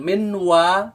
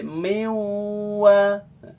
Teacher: jadi non melebur jadi Wow mewah bukan Menwa tapi mewah Bukan main yaumin tapi Mei aomin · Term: melebur disertai dengan dengung